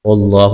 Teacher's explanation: لفظ اللہ کے نام سے پہلے زبر ہے، لفظ اللہ کے نام کو موٹا کرنا ہے۔